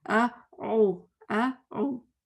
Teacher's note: جب میں کسی کی اپنی مسٹیک لکھتی ہوں نا، میں اس کو اس طرح کٹ کر دیتی ہوں، باقاعدہ لائن لگاتی ہوں اپنے آپ کو ظاہر کرنے کے لیے کہ آ اور او جڑے ہوئے نہیں ہیں، کٹے ہوئے ہیں. تو بولنے میں بھی کٹے ہونے چاہیے.